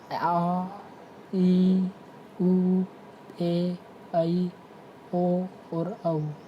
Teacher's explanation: वे स्वर जिनके उच्चारण में लघु स्वरों की तुलना में दुगना समय लगता है, अर्थात 2 मात्रा का समय लगता है, दीर्घ स्वर कहलाते हैं। दीर्घ का मतलब होता है बड़ा, हर्ष का अर्थ है छोटा।